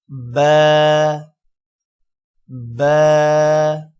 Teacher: با ادا کرتے ہوئے اوپر والا ہونٹ اور نیچے والا ہونٹ آپس میں ملیں گے